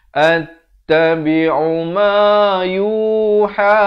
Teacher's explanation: Attabi'u ma yuha, ma 2 harakat, yu 2 harakat, ha dibaca dengan 4 atau 5 harakat